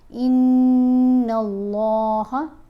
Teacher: نون کے اوپر ہم غنہ کریں گے، غنہ کرتے ہوئے لام سے ملائیں گے۔ ان اللہ، اللہ کی لام کو یہاں پر موٹا پڑھا جائے گا